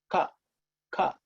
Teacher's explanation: What happens if you really observe, the tongue actually raises and touches the palate. And it blocks the air from coming, and then it releases it.